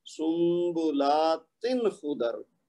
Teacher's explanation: ता की तनवीन को लंबा नहीं करना, गुन्ना नहीं होने देना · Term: इजहार